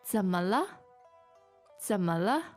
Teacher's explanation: What are the tones here? Third and 2 neutral tones. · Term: Third and 2 neutrals